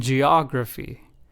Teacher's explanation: the emphasis was on the second syllable, og, in geography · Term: word stress